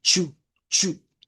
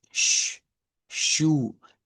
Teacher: hay una gran diferencia porque esta es ch y es chu chu y la sh es más arrastrada